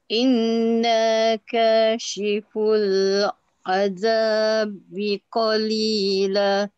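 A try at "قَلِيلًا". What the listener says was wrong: Okey, cumanya dekat qalila. Kalau nak berhenti tadi, bacakan la tu dengan panjang. Qalila. Panjangkan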